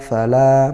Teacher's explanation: fala mat tabi'i fathah diikuti alif, panjangnya 1 alif atau 2 harokat